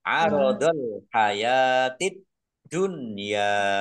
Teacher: alif lam syamsiah karena tidak dibaca. Langsung masuk ke huruf berikutnya yaitu dal, ditandai dalnya ada tasdidnya, dalnya dibaca double.